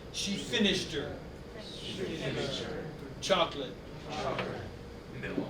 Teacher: There's almost no linking, except for she finished her.